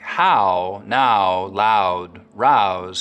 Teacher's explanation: canadians still use that wide ow diphthong